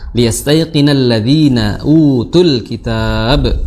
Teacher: Sin dia memiliki sifat hams, ya. Kemudian dia ringan mengucapkannya.